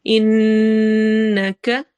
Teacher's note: انک نون غنہ ہو رہا ہے، نون میں آواز ناک میں جائے گی